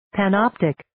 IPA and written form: pæn'ɑːptɪk (Panoptic)